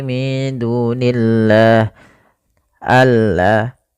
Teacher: pada lafal Allah ketika dia didahului dengan kasrah tidak boleh dibaca tebal lamnya. Tidak boleh min dunillah, tidak.